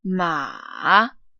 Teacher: Ma. And the fourth tone starts high, but it forcefully goes down.